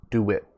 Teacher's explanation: so you see my mouth is actually making a w sound